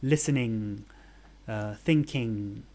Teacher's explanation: Words ending in ing, I don't hear the G. And that's because it's not there. There is no G sound in ing.